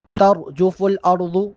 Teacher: تر میں را کو موٹا پڑھیں گے، اسی طریقے سے ارض، یہاں پر بھی را اور ضاد دونوں کو موٹا پڑھا جائے گا